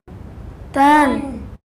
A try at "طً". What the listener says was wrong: طا کو موٹا کریں گے طا دو زبر